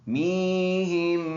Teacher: मीहिम इसमें गुन्ना करेंगे।